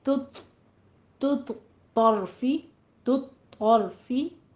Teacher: تو نہیں کہنا، پہلے تا کو تو نہیں بنا دینا، تا باریک نکلے گی منہ سے، آگے تو میں جا کے پر حرف اٹھانا ہے